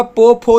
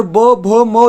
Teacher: प, फ जो हो गया दोस्तों ये अघोष हो गया, और ब, भ, म ये हो गया दोस्तों आपका घोष हो गया